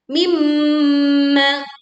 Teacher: sempurnakan dengung saat mim bertasydid.